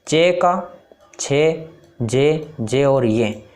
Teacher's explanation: चे का छे, जे और ये, इन पांचों का उच्चारण स्थान है वो तालव्य है, इसलिए इनको तालव्य व्यंजन कहा जाता है।